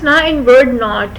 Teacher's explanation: It is articulated in such a unique way that mouth is closed and the velum is lowered, but then the air is forced to go out from the nose, so it becomes a nasal sound. It is voiced because it is articulated with the vibration in the vocal cords. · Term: alveolar nasal